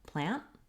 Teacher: Basically what I'm doing there is I'm lifting my tongue for that T, but I'm not releasing the air. · we often say the word plant without saying the T sound at the end. This is a typical pattern for American English speakers that we don't always say our T sounds. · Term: stopped T